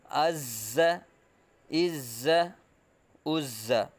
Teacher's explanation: زا حروف صفیریہ میں سے ہے، سیٹی کی طرح تیز آواز نکلے گی